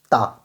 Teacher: ये क्या है? ता, देखिए जीभ जो है ना दांतों से आकर के टकराती है, तो आपका ये ता सही हो जाएगा। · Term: दंतम्ब वर्ण